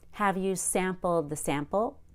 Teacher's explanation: you might feel like sample went up at the end but that's because it's a yes/no question